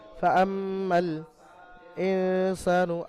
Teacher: ওয়াজিব গুন্না এক আলিফ পরিমাণ মিমকে গুন্না করে পড়তে হবে